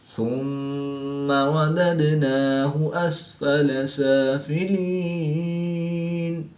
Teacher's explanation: میم مشدد میں ہمیشہ غنہ ہوتا ہے تو یہاں پر ہم غنہ آنے کر کے پڑھیں گے۔ دال ساکن ہے تو یہاں پر قلقلہ صغریٰ کر کے پڑھیں گے